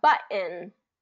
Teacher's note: So what we're going to do is we're going to go in, we're going to go through this word list of some of these words that have that T, then a vowel, and the N where the vowel gets dropped, where the vowel's getting dropped here, and that T becomes more of a glottal stop